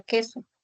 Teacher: a nivel de transcripción fonológica es un mismo Sonido La oclusiva velar sorda